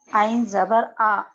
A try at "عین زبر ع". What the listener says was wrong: عین اچھے سے آواز نکالیے. عین زبر ع.